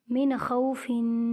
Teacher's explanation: میم، نون، زیر من، خا، واو، زبر خو، من خو، فا، 2 زیر فن، من خوفن۔ نون ساکن کے بعد خا حروف ہلکی میں سے ہے، اس لیے یہاں پر غنہ نہیں کریں گے